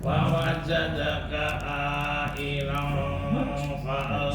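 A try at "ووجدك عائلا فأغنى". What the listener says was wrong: Sama ilan fa'aghna. A-nya 6 harokat. Kurang panjang.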